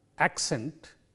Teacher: in this word which is accent there are two syllables in this word and the stress is on the first syllable of this word